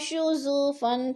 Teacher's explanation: شو فن پہ اخفا ہو رہا ہے، نون ساکن کے بعد شین حروف اخفا میں سے ہے تو ادھر غنہ کریں گے، ناک میں آواز لے جائیں گے